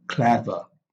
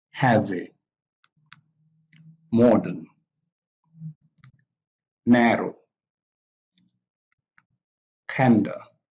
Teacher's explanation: clever so this stress is on clever heavy modern narrow candle so all these words have the stress on the first syllable